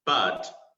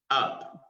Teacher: it's actually the schwa sound but a little more uh a little stressed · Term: triangle